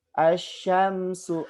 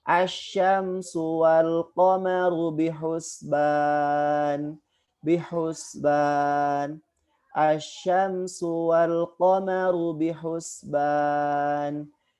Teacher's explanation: Huruf sya keluarnya adalah di tengah lidah. Posisi tengah lidahnya memang terangkat, namun tidak nempel ke langit-langit, tidak menyentuh langit-langit, ya. Hanya terangkat saja.